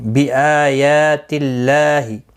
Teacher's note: حمزہ کے اوپر کھڑی زبر ہے، یا کے اوپر بھی کھڑی زبر ہے، دونوں کو 1 الف کی مقدار کے برابر کھینچ کر پڑھیں گے. یہاں پر اللہ کا لام زیر کی وجہ سے باریک پڑھا جائے گا، اس کے اوپر کھڑی زبر بھی ہے، 1 الف کی مقدار کے برابر کھینچ کر پڑھیں گے.